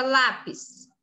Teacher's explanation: a sílaba mais forte é lá então o PIS é a última sílaba e lá é a penúltima sílaba quando a penúltima sílaba mais forte essa palavra é paroxítona você